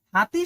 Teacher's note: উচ্চারণের সময় ধ্বনিধার থেকে বায়ু কন্ঠনালী হয়ে সরাসরি বের হয়ে আসে। হাতি শব্দের হ কন্ঠনালী ও ব্যঞ্জন ধ্বনির উদাহরণ।